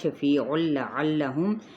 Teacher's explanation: عین کو وسط حلق سے ادا کرتے ہوئے لام کے ساتھ ملاتے ہوئے لام کی حرکت کو کھینچیں گے نہیں